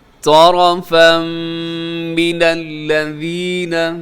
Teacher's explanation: آگے ادغام ہے، تنوین کے بعد میم ہے